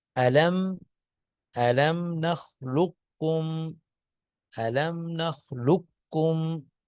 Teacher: قاف جو ہے وہ گویا بالکل نہیں ہے، پڑا ہی کاف جائے گا. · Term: ادغام تام